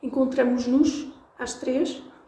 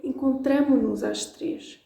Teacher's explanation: Encontramos-nos, it's hard to pronounce. So we actually then are allowed to drop the S. But a lot of people miss it and then it sounds really funny.